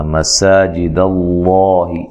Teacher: سین کو باریک سیٹی سے ادا کرنا ہے، لفظ اللہ کو موٹا ادا کرنا ہے، اس سے پہلے حرف پر زبر ہے.